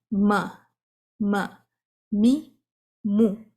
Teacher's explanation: ہونٹوں کا تو استعمال ہو رہا ہے، ساتھ ناک کا بھی ہوتا ہے. تو اس کا بھی مخرج 50% ہونٹوں پہ ہے اور 50% ناک میں ہے. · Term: نیزل ساؤنڈ